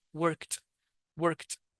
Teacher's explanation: Now you add a t in the end.